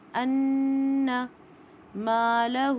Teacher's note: نون مشدد پہ 2 کاؤنٹ کا غنہ ہوتا ہے، ان مالہ، خالی الف سے پہلے اگر زبر آئے تو الف مدہ بن جائے گا، 2 کاؤنٹ الف ہوگا، مالہ، اور الٹا پیش 2 کاؤنٹ ہوتا ہے، اوپر 2 کاؤنٹ کی مد بھی ہے، یعنی کہ 4 کاؤنٹ ہو جائے گا۔